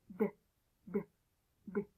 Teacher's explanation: D is a voice sound. It makes your vocal cords vibrate a lot so you can feel it very good. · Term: D sound